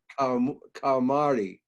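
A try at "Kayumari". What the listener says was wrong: Yeah, it sounded in my ears, it sounded like you were saying calamari.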